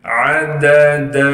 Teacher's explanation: دال کے بعد الف مدہ ہونے کی وجہ سے دال پر جب وقف کریں گے پھر دال کو ایک الف کے مقدار کھینچیں گے